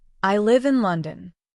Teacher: For example, listen to this statement, I live in London. When you say it naturally, your voice falls at the end on the word London. This falling pitch tells the listener that your thought is complete.